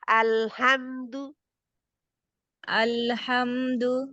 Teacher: क्योंकि ये शद नहीं है अल बहुत नरमी से लगाए इसको ला जो है उसमें बारीकी भी है और नरमी भी है सक्ती नहीं है